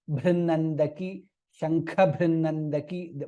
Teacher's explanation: Shankha Bhrannandaki, both are Mahaprana there. Kha and Bha.